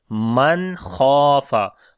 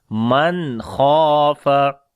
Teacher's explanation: Wa amma man, after the noon sakin the next letter is throttle letter, which is kha, so we make izhar here, the izhar halaki, the clear sound of noon sakin